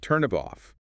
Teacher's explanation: The final consonant of one word links directly onto the initial vowel of the next.